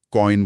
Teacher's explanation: इसमें बोलते समय आवाज एक स्वर से शुरू होकर दूसरे की तरफ फिसलती है। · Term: इंप्योर वोवेल्स